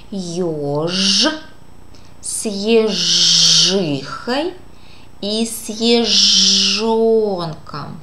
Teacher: Для звука Ш горлышко молчит, для звука Ж горлышко дребезжит и дрожит, так как звук Ж звонкий.